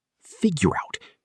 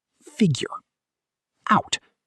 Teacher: Notice how the R sound links right into the out.